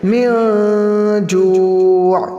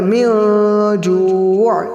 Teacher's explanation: نون ساکن کے بعد جیم آیا، تو حروف اخفا کے 15 حروف میں سے اگر کوئی بھی حرف آئے تو وہاں پر اخفا کریں گے، گنہ کے ساتھ پڑھیں گے